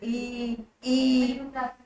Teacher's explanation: हल्की सी जीभ साइड से तालु को टच कर रही है, इनका उच्चारण स्थान भी तालु आता है।